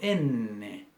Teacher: yo pongo la punta de la lengua sobre el alvéolo s abombamiento de la encía que está detrás de los dientes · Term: sonido alveolar